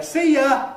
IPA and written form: ˈsiː jə (See you)